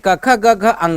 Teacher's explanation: क वर्ग होता है जिसका उच्चारण कंठ से होता है